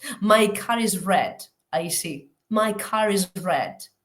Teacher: en la variedad inglesa no realiza la r la r no ser que quede intervocálica